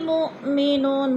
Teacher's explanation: مؤ پہ حمزہ ساکنہ ہے، جھٹکا دے کر پڑھیں گے ، نو پہ وہ مدہ ہے، وہ ساکن سے پہلے نون